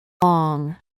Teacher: este se produce elevando o llevando la parte trasera de la lengua hacia el velo del paladar, que es la parte posterior del paladar, bloqueando así la salida de aire por la boca y expulsándolo por la nariz al momento de pronunciar la consonante. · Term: sonido nasal, velar sonoro